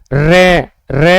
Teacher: र में हमारी जीभ क्या होती है? दो तीन बार उसमें क्या होता है? कंपन होता है। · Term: लुंठित